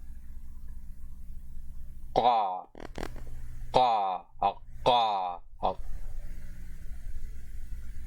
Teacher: this is the voiceless uvular plosive consonant